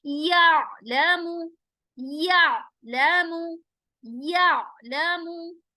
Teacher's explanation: आइन पर आवाज को स्टॉप करेंगे और हलक के बीच वाले हिस्से से आइन को प्रोनाउंस करेंगे